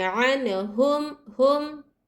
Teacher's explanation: ہے تو یہاں اظہار شفوی کا قاعدہ ہو رہا ہے، تو ہم کیا کریں گے میم کی آواز کو ظاہر کریں گے، غنہ نہیں کریں گے نہ اخفا کریں گے